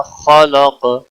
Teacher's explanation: मद है, अलिफ मद्दा, 1 अलिफ के बराबर खींच कर पढ़ेंगे। खलक, खा पुर होगा और क़ाफ भी मोटा पढ़ा जाएगा, खा भी मोटा पढ़ा जाएगा।